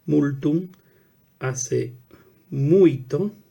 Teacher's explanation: vocalización de la lateral en el grupo fonético ULT